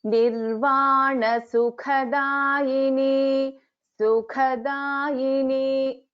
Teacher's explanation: Kha is a mahaprana, da is a alpa prana.